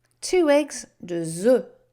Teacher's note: You make the liaison into the word because it's a vowel open sound.